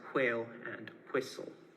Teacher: there is retention of the labiovelar fricative in WH words, so words like whale and whistle would be pronounced as whale and whistle.